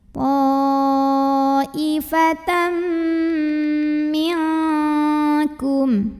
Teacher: Maka tanwin fathah dimasukkan atau dileburkan ke mim. Ta'ifatam m dan tahan dengungkan. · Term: idgham bi gunnah